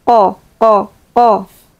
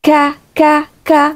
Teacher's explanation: Qof sukun bertemu kaf. Qof itu ada di ee pangkal tenggorokan ya. Qof agak naik dikit. Kaf naik lagi gitu. Jadi misalnya qof itu di sini qo qo qof ka ka.